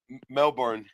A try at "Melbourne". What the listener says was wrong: It's not a hard R. It's a soft R.